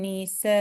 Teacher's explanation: Here, the ni, it will be short, not nisa, but nisa, nisa. And this sa is going to be, we're going to stretch it 5 counts